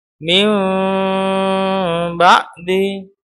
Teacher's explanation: selain berubah jadi mim, bibir juga tidak terlalu rapat. Walaupun ada juga pendapat yang mengatakan boleh merapatkan bibir, tapi kami mengambil yang tidak merapatkan bibir secara sempurna. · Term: iklab